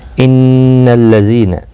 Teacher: نون مشدد پر غنہ ہوگا، زی یا مدہ ہے، ایک الف کی مقدار کے برابر کھینچ کر پڑھیں گے